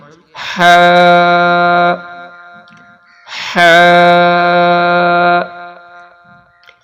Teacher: ہا کو ہم پڑھیں گے حلق سے، اس کی آواز باریک ہے۔ اس میں آپ یہ پہچان کریے گا کہ یہاں پہ گول والی ہا ہے اور دو چشمی والی ہا، اس کی آواز آئے گی سینے سے، اور اس ہا کی آواز آئے گی حلق سے، باریک آواز ہے۔